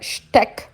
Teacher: O S antes do T vai ter som de sh, como a gente já falou, antes de T e de P.